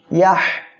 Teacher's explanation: এখানে হা অক্ষরটা হামসের অক্ষর, আমরা এখানে বাতাসটা চালু রাখবো।